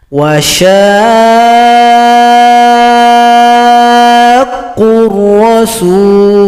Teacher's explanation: Berikutnya ayat 32, di sini ada mad lazim mutsaqqal kalimi, panjangkan shin 6 ketukan baru tasydid pada huruf qaf.